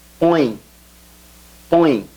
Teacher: Notice how the O goes nasal because it has the til accent on it.